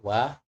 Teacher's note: wau ini perama kita harus tahu dia adalah bukan wau mad caranya ya Mudah sekali wau menggabungkan dua bibir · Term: huruf Wau